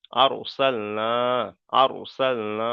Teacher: র সাকিনের পূর্বে জাবার এসছে, র সাকিনকে পুর করে পড়তে হবে